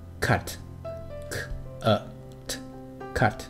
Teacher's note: 软腭阻塞音▁k▁的声音听起来像是敲击物体所发出的咳咳声